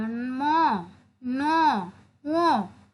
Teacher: যে ধ্বনিগুলো উচ্চারণের সময় বাতাস কেবল নাক দিয়ে বের হয় সেগুলো কি নাসিক্য ধ্বনি বলে। এটা হচ্ছে যেমন নাসিক্য ধ্বনি উচ্চারণ করতে গেলে তোমাকে নাকের মাধ্যমে কিন্তু সে মানে উচ্চারণ করতে হবে ম ন ও এভাবে।